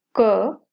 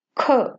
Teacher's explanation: कम प्राणवायु की आवश्यकता क के उच्चारण में लग रही है और ख के उच्चारण में अधिक प्राणवायु लग रही है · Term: महाप्राण